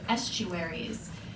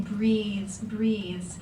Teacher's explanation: the long e sounds at the end of estuaries gets picked up again in breathes breathes